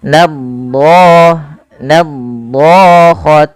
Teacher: tebalkan di lafal huruf do-nya ya, karena dia huruf do punya sifat isti'la dan itbaq. Isti'la itu pangkal lidahnya terangkat, sedangkan itbaq lidah melekat-lekat dengan langit-langit atas, maka dia menebal.